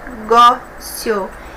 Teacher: penúltima sílaba mais forte paroxítona terminada em ditongo